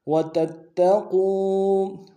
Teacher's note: تا کو اگلے تا کے ساتھ ملانا ہے، اگلے تا کے اوپر تشدید زور دیں گے